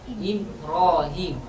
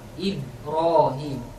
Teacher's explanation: ketika seseorang mengucapkan mim, contohnya mim itu serupa sama ba, maksudnya satu makhraj dengan ba, sama-sama di bibir